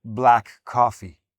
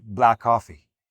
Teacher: You drop that first ck. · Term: elision